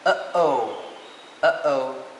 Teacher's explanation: has a glottal stop since the airflow is obstructed before the letter U